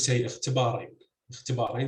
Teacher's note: so stress would be on the third syllable with the long vowel